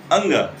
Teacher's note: अंग के उच्चारण में कंठ प्लस नासिका